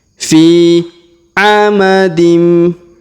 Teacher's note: Huruf fi kita panjangkan 2 harokat karena di depannya terdapat ya sukun.